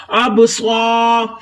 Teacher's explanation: سواد کو سیٹی کی آواز دے کر اور موٹا پڑھیں گے، الف خالی ہے، اس سے پہلے زبر تو ایک الف کی مقدار لمبا کریں گے، الف مدہ ہو رہا ہے یہاں، اب سوا۔